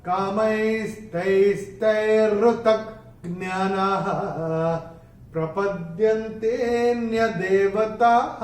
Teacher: चरण की समाप्ति पे विसर्ग का उच्चारण ह ही होगा।